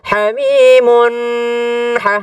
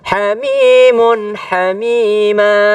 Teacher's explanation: ketika ada tanwin, ya, atau in atau an ketemu dengan ha, itu tidak berdengung. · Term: huruf izhar